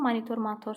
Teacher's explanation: İstisna monitor, motor sözlərimiz var ki, onlarda vurğu torun üzərindədir, yəni sonluğa düşür. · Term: heca vurğusu